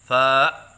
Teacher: حمزہ کے ساتھ پڑھنا جیسے فا، یہ غلط ہے